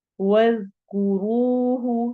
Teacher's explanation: رو کو ہم نے یہاں پر موٹا کرنا ہے